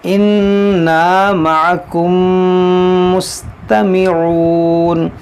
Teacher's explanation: یہاں دیکھیں میم ساکن کے بعد میم، یہاں پر ادغام شفوی ہوگا، یعنی یہاں پر غنہ ہوگا